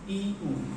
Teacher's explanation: যে স্বরধ্বনিগুলি উচ্চারণ করতে গেলে আমাদের মুখবিবরের আয়তন বড় নয়, একটু সামান্যতম হয়, সেটাগুলো সংবৃত্ত। যেমন ই, উ। এই ই এবং উ, এই দুটি স্বরধ্বনি উচ্চারণ করতে আমাদের মুখবিবরের আয়তনটা বেশি না করলেও চলে।